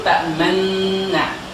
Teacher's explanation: Akan tetapi dimasukkan nun yang pertama ke nun yang kedua sehingga menjadi ta'manna, sehingga dibaca dengan ismam, yaitu dengan memoyongkan mulut, ta'manna, supaya menandakan ada nun berharokat dhammah dimasukkan ke nun setelahnya, ya.